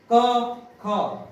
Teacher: क जब बोलेंगे तो लास्ट में अ का उच्चारण आएगा